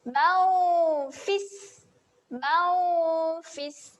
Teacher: Dengung bersedia menyebut huruf fa iaitu hujung gigi atas berjumpa dengan bibir bawah.